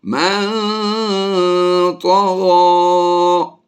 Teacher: جب بھی نون ساکن کے بعد حروف یرملون میں سے کوئی حرف آئے تو ادغام مع الغنہ کرتے ہیں، اور یہاں پر بھی میم مشدد میں ہم ہمیشہ غنہ کر کے پڑھتے ہیں. نون ساکن کے بعد یہاں پر حروف اخفا میں سے طا آ گیا، اس لیے اخفا کر کے غنہ